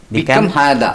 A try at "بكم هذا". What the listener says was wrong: Not come هذا. നമ്മൾ മലയാളികൾ minimum പഠിച്ചു വരുന്ന വേണം കം ഹാദ. ബി ഉണ്ടല്ലേ? B is there.